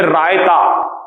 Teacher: रायते में आप रा का उच्चारण जब करेंगे तो वो मूर्धन्य होगा, क्योंकि रा को आप पीछे से लेकर आएंगे